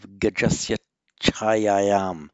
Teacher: if a vowel precedes an aspirated ch, it has the effect of doubling the ch, not only within a word, internal sandhi, but also sandhi between the words. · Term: double that ch